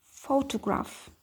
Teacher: Stress urg'u boshida bo'lyapti